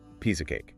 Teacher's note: And the grammatical glue connecting them, which is the tiny word of, completely loses its strong consonant. It weakens down into a tiny, fast, barely audible sound. So rhythmically, it links into one fluid phrase. · All the vocal emphasis is placed on the outer words, and that middle word just shrinks. If you are learning the language and strictly listening for the distinct sounds of the word of, you're going to completely miss the idiom as it flies right past you.